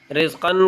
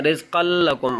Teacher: را اور لام یہ 2 ایسے ہیں کہ ان کے اندر ادغام تو ہوگا لیکن غنہ نہیں ہوگا